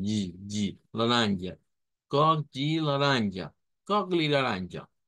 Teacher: recuerden esa a nasalizada a media nasalizada